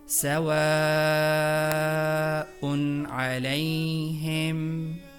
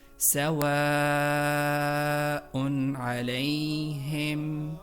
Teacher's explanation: جیسے مثال کے طور پر سواء علیہم، یہاں بھی حرف مد یعنی الف کے بعد حمزہ موجود ہے، لہٰذا الف کو واو کی مدد سے لمبا کرنا ہے 3 یا 4 الف کی بقدر، کیونکہ الف پر کوئی بنیادی حرکت نہیں ہے، اور جس حرف پر صرف مد موجود ہوتی ہے تو اس سے پچھلے حرف جو بھی ہوتا ہے اس کی مدد سے ہم الف، واو یا کی مد کو لمبا کرتے ہیں.